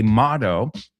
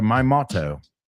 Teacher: if you're British, the T sounds more like a T, not a D. Americans, we say motto.